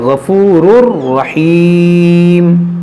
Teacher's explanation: یہاں پر تنوین کے بعد را ہے تو یہاں پر بھی ادغام کریں گے بغیر گنہ کے